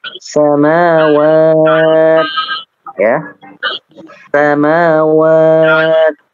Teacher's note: ini ada hamas di huruf ta ya, huruf ta